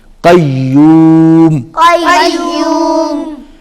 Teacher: قیوم جب آپ پڑھیں گے تو آواز ناک میں نہیں جائے گی